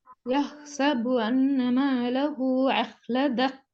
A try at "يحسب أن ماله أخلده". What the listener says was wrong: அலிஃப்ல உச்சரிப்பு வரல. ஹால் நீட்டுறது போதாது.